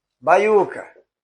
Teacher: o U, aqui o U, é mais forte do que o I. O som dele é mais forte.